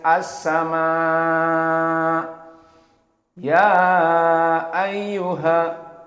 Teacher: mad jaiz munfasil, the separate mad, is pronounced with 6 movements